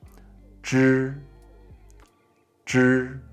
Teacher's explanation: So it's like the j, you're saying j, j in English, the j sound, but you're just raising your tongue up slightly.